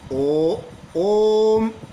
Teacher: ओम में जो ओ की ध्वनि निकलती है थोड़ा लंबा निकलती है यानी दो से अधिक मात्रा का समय लगा इसीलिए इसको तीन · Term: प्लू स्वर